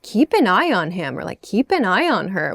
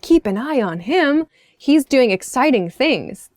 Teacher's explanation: if you say it with an upward intonation, kind of happy, like, whoa, keep an eye on him, he's doing exciting things.